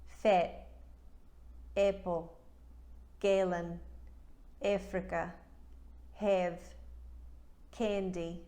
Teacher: a New Zealander will turn the short A into eh, as in let.